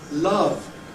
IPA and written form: lʌv (love)